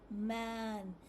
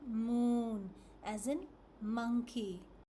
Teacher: For M. The lips stay closed and the sound is produced nasally, which means it comes from your nose.